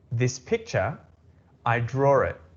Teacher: Now the verb draw, it doesn't have an R, right? But because of the intrusive R, we are going to pronounce it as if there was an R.